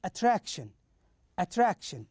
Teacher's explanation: So here we stress the second syllable